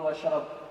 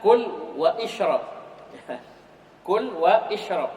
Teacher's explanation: Hamzah wasalnya gak dibaca